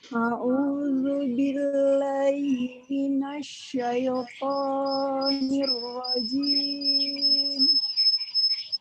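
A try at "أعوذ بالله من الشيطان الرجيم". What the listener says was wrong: Boleh diulang toknya kepanjangan? Minasyaitoni.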